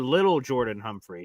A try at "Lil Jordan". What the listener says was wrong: Lil Jordan. Lil. It's just Lil. So you don't say little. You say like little, but it's just Lil Jordan.